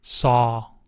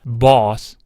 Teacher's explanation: 미국인의 경우 70% 내지 80%를 어에 가깝게 발음해야 되고요. 20에서 30% 정도는요. 오에 가깝게 발음하시면 됩니다. 영국 사람 같은 경우엔 반대인데요.